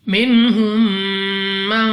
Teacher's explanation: मीम साकिन के बाद दूसरी मीम इदगाम में शफवी का कायदा है और यहाँ पर हमने गुन्ना करना होगा